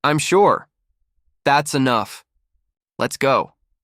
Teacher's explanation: The pitch falls at the end. It sounds strong, certain, complete. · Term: falling tone